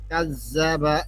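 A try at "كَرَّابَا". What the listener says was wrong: কাজ, আপনার কাজ একটা শব্দ হয়, কাজ, আমার কিন্তু শব্দ হয় না। কার্রাবা, কার্রাবা, জিব্বা লাগবে তো, এটা জাল। জিব্বা কই আপনি, জিব্বা। কার্রাবা, রাবা, কার্রাবা, কাজ, কার্রাবা, কার্রাবা। আপনারটা হয় কাজ্জাবা, আপনারটা হয় কাজ্জাবা ভাইয়া। কাজ্জাবা বললে ওইখানে যা এসে পড়ে, যা, র, যা, রা। জিব্বা আগে বের করে রাখেন, জিব্বাটা আগে বের করেন, জিব্বা বের করে দাঁতে লাগান,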